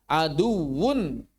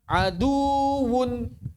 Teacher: memanjangkannya saat bertasydid menyerupai mad. Contohnya kata aduwun bukan dibaca aduun.